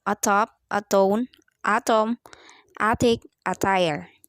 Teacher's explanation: The alveolar stops. Voiceless alveolar stop.